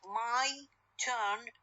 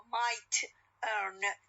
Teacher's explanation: The difference is what is the aspirated t. My turn t is aspirated one, but when it comes at the end of the word might, no, it is unaspirated.